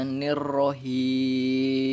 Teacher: tidak boleh terlalu getarannya pada huruf ro ini